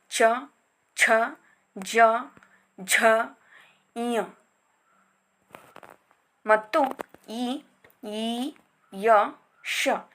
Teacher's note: ದವಡೆಯ ಸಹಾಯದಿಂದ ಉಚ್ಚರಿಸಲ್ಪಡುವಂತಹ ಅಕ್ಷರಗಳೆಲ್ಲವೂ ತಾಲವ್ಯ ಅಕ್ಷರಗಳಾಗಿ ವರ್ಗೀಕರಿಸಲ್ಪಟ್ಟಿವೆ. ಅವುಗಳೆಂದರೆ ಚ, ಛ, ಜ, ಝ, ಞ ಮತ್ತು ಇ, ಈ, ಯ, ಶ ಈ ರೀತಿಯಾಗಿ ಇವುಗಳನ್ನು ತಾಲವ್ಯ ಅಕ್ಷರಗಳೆಂದು ಗುರುತಿಸಲಾಗಿದೆ.